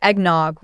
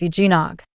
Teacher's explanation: Some people say eggnog with an extra W sound, but that's not it. The correct pronunciation is eggnog. No extra W sound.